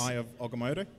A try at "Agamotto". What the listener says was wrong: Your pronunciation is terrible. It is Agamotto. It's with an A, you